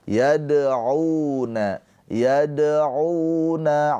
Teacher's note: Cara bacanya dannya ini dipantulkan dengan ringan ya. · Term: qalqalah sughro